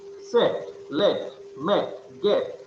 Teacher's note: Front unrounded vowel between half closed and half open.